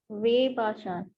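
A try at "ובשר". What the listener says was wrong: not way. See, that is Beth. Beth is which word? Label. So before label is Shurek. Before label is Shurek.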